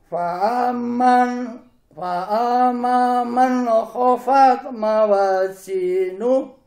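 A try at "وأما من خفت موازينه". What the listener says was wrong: Nah, masih tertukar nih Pak huruf baunya. tertukar. Wa bukan fa ya Pak. Hati-hati, jangan sampai huruf fa dengan huruf wawu.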